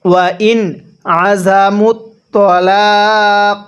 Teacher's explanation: এই নুন সাকিনটা আমরা স্পষ্ট করে পড়ব, কারণ এখানে নুন সাকিনের পরে আইনটি হলো ইজহারে হরফ। আর নুন সাকিনের পরে ইজহারে হরফ থেকে কোনো একটি হরফ থাকলে নুন সাকিনটা স্পষ্ট করে পড়তে হয়।